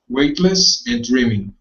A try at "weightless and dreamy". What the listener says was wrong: Okay, and not dreaming, but dreamy. Dreamy.